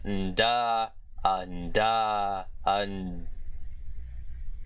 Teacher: the pre-nasalized voiced alveolar plosive consonant, or the post-stopped voiced alveolar nasal consonant, whatever you want to describe it as.